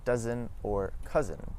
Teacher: The s in between two vowels as well as the zed sound make a z.